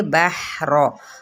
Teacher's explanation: बा की ज़बर को हा के साथ मिलाएंगे, बहर, रॉ पुर पड़ी जाएगी